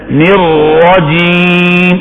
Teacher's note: را کو موٹا پڑھو، زبان کی یہ پشت اوپر کے مسوروں سے لگ جائے